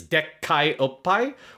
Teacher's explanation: where he puts a glottal stop on the word dekkai, which means big, to like emphasize them being huge